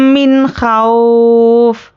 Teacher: अब यहाँ पे नून साकिन है तो नून साकिन के बाद हुर्फ़ हल्क़ी है, तो यहाँ पे इजहार का क़ायदा बनता है। तो यहाँ पर हम नून को ज़ाहिर करके जल्द अदा करेंगे।